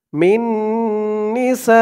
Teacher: সা 4 আলিফ টান মধ্যে মুত্তাসিল।